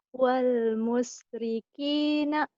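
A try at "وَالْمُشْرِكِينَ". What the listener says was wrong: Bagus. Cuman shinnya kurang kurang ngecres. Wal musyrikina.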